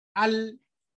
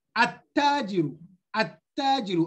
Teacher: I give the Ta Shadda, and from the A, I jumped to the Ta, At-tajiru. So I don't pronounce the Lam.